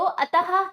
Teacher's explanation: जैसे अतः शब्द का उच्चारण तो अतः के रूप में होता है, पर लिखने के समय इसको इस प्रकार लिखा जाता है क्योंकि यह विसर्ग होता है, दो बिंदुओं के रूप में होता है, प्रत्येक व्यंजन के बराबर में लगता है और इसका उच्चारण हा व्यंजन के रूप में होता है